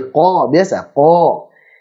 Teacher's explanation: Tebalkan qaf, tapi jangan terlalu tebal, jangan ko, tapi qa biasa, qa.